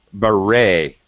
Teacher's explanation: Beret. Notice I don't pronounce the T.